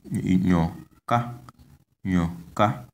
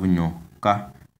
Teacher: You can see that the tone is on the last vowel a